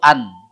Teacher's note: lidah kita ke atas naik ke langit-langit berhenti di situ an itu bunyi huruf berharakat dan tidak dilepas kalau dilepas hilang